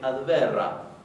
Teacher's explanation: ellos parece que no distinguen muy bien entre la vibrante simple y la vibrante múltiple. Entonces, una palabra como por ejemplo el verbo advera, sin que haya dos caracteres iguales, ellos van a decir adverra, en algunos casos.